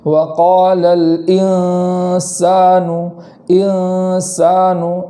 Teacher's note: اس لام کے بعد جو حمزہ ہے اس حمزہ کو خوب جھٹکے کے ساتھ پڑھیں گے، اور اس کے بعد جو نون ہے اس نون کے اندر اخفا ہوتا ہے، تو اخفا ادا کرتے وقت ایک الف کے برابر وہاں گنہ کریں گے، اور گنہ میں اس بات کا خیال کریں گے کہ نون کے مخرج سے زبان جدا رہے، ایسا نہ ہو کہ مخرج میں لگ جائے ورنہ وہ اظہار ہو جائے گا، جیسے وقال الانسان، انسان ایسا نہیں پڑھیں گے بلکہ وقال الانسان، انسان اس طریقے سے پڑھیں گے۔